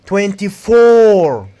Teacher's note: you have to put the stress on four and stretch it make it longer and louder